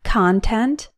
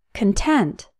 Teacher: the Co n is pronounced con to rhyme with the word on when that syllable is stressed and Co n is pronounced cun to rhyme with the word son when that syllable is unstressed